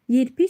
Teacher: Sözdəki saitlər incə olsun və dodaqlanan saitlər olsun. Yerpik sözündə və i saiti incədir, amma dodaqlanmır.